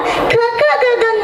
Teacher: ನಮ್ಮ ಹೊಟ್ಟೆ ಉಸಿರಿನ ಕಂಠದ ಆಳದಲ್ಲಿ ತಡೆ ಹಿಡಿದೀವಿ